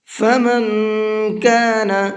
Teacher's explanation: اس نون کے اندر بھی اخفا کریں گے، اس لیے کہ نون ساکن کے بعد میں کاف ہے۔